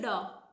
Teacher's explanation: हमें ऊपर उठाकर झटके से नीचे आना है जैसे कि ड एकदम से ऊपर गई हमारी जीब और नीचे आई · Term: उत्क्षिप्त